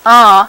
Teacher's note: it's made by having the velum relaxed so that some of the ah sound comes out through the nose, not just through the mouth. So we can have nasal vowels and oral vowels, and there are several languages in Oklahoma which make that distinction. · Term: nasal ah